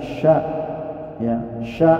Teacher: menunjukkan ada angin yang ditekan kuat ditengah lidah